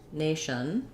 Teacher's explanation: my schwa might be a little higher because the sh are forward and the n is lifted in the mouth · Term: reduced vowel